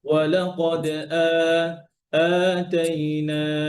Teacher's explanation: এখানে এক আলিফ মানে হচ্ছে 2 কাউন্টস, মানে হচ্ছে 1 2, এই 1 2 যতটুকু সময় লাগছে আপনি মা ততটুকু করবেন।